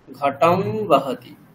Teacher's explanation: অনুনাসিক বকার হয়ে যাবে, যেমন বহতি